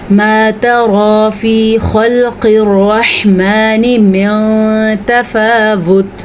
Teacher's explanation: را کو پر پڑھا ہم نے، تا کو باریک پڑھا، تو را نہیں پڑھنا، اس کو ترا پڑھنا ہے۔